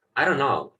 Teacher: Ellos simplemente dicen I don't. Hasta la N le llegan.